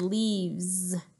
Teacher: that word ends with an S the letter s but we say it like a Z